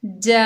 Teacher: इस मद को 4 से 5 अलिफ की मिकदार तक खींच कर पढ़ सकते हैं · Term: मद मुतसिल वाजिब